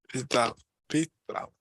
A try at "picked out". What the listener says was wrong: Picked out, yeah.